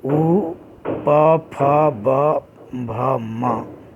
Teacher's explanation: ओष्ठ, उ, प, फ, ब, भ, म, जब इन वर्णों का उच्चारण करते हैं तो हमारे दोनों ओठ आपस में स्पर्श करते हैं तो इन वर्णों का उच्चारण स्थान ओष्ठ होगा।